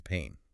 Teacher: Pan, like a frying pan, has that short A sound. Pain, the feeling, has that A diphthong.